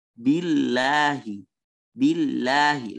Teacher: Ada lagi yang ditipiskan billahi. Billahi, lamnya ditipiskan.